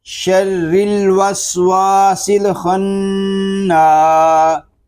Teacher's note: نون مشدد میں شروع ہی سے غنہ کریں گے